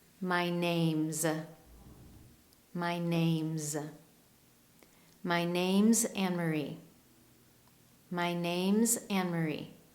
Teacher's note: Do you notice that /s/ sounds like a /z/ sound? It has a -z sound.